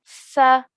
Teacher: we have to take the tip of our tongue and touch it to our top two teeth at the front